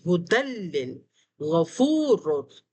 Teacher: لیکن بلا غنہ میں یہ ہوتا ہے کہ جب لام اور را آتا ہے تو یہ غنے کو نہیں الاؤ کرتے ہیں، اور ہماری کوشش ہوتی ہے کہ ہم نون کو بغیر ظاہر کیے جلدی سے پڑھ جائیں